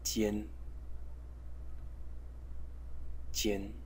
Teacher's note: a Chinese character which is pronounced Jian, Jian in the first tone